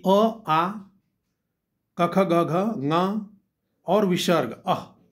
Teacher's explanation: अकुह विसर्जनीय नाम कंठ, कि अ आ क ख ग घ ङ और विसर्ग अह, इस सब कंठ से उच्चारित हैं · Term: कंठवर्ण